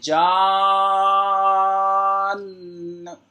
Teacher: اس کو بھی 3، 4 یا 5 الف، منیمم 3 الف، کم سے کم 3 الف کھینچیں گے۔